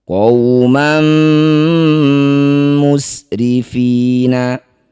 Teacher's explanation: Fathah tanwin bertemu mim disebut bacaan namanya idgham bighunah. Masukkan bunyi tanwin man pada mim. Jadi langsung rapat bibir dengungkan dua harakat. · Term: idgham bi gunnah